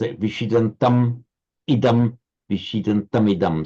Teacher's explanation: it's followed by a vowel. So it retains the full m sound and is immediately followed by its vowel. And is so written in the Devanagari as well.